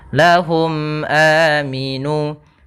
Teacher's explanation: Nah, kembali lagi di sini ada mim mati bertemu hamzah, maka dinamakan dengan izhar syafawi, yaitu suara mimnya harus jelas dan tidak boleh ditahan. Tidak ada panjangnya dan tidak ada gunnahnya